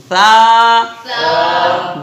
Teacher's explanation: صرف زبان اوپر والے دانتوں سے لگانا ہے اور نچلے والے دانتوں کا بالکل لگنے نہیں دینا ہے